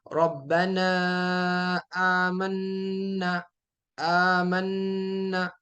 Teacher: دوسرا یاد رکھنا، تجوید کا ایک قاعدہ یہ ہے کہ جب نون مشدد ہو اور میم مشدد ہو، یعنی نون کے اوپر تشدید ہو اور میم کے اوپر تشدید ہو، تو یہاں پر 2 سیکنڈ تک آپ نے غنہ کرنا ہے